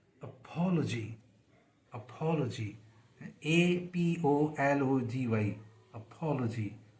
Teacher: तो जो शुरू का ए है, जैसे हम बोलते हैं अपोलॉजी नहीं पढ़ा जाएगा, बल्कि पी पे जो उसके स्ट्रेस है अपोलॉजी, तो शुरू वाला ए है वो बिल्कुल वीक हो जाएगा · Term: very weak form